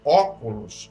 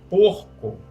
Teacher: o O da palavra óculos é aberto. E em porco, o O é fechado.